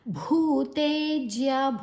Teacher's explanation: ಭೂ ದೀರ್ಘ ಅಕ್ಷರ ತೆ ದೀರ್ಘ ಅಕ್ಷರ ಭೂ ಮಹಾಪ್ರಾಣ